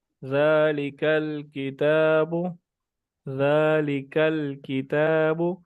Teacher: کی طرف، جہاں پہ سخت ایریا ختم ہو رہا ہے اور نرم ایریا شروع ہو رہا ہے وہاں پہ یہ زبان لگتی ہے تو کاف ادا ہوتا ہے. زبان جب اوپر والے نرم اور سخت تالو سے ملتی ہے، یعنی اس ایریا سے جہاں پہ یہ سخت والا ختم ہو رہا ہے اور نرم والا شروع ہو رہا ہے وہاں پہ زبان لگتی ہے تو کاف ادا ہوتا ہے.